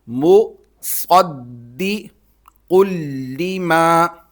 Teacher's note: قاف کو لام کے ساتھ ملائیں گے، وہی تشدید والا قانون، تنوین ختم ہو جائے گی اور قاف موٹا کرنا ہے